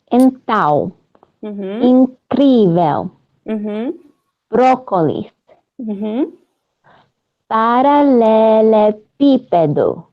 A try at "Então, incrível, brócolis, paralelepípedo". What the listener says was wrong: Muito bom! You did great!